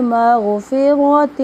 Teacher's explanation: غین کو موٹا پڑھیں گے اور را بھی موٹا پڑھیں گے